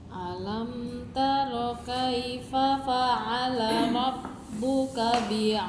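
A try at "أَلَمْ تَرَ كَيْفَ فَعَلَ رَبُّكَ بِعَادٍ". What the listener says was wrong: Jangan pakai jeda. Enggak.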